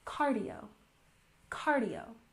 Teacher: We put the stress on the first syllable